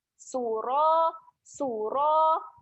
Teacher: Ra kat sini fokusnya adalah ra yang tebal. Jadi kita kena muncung sikit mulut.